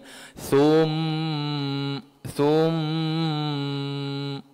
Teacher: Mim itu didengungkan dengan kadar dua harakat. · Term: wajibul ghunnah